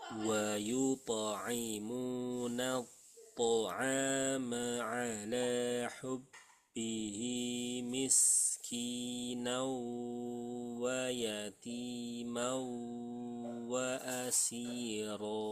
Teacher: Nah, hubbihi ini cuma dua harokat ya.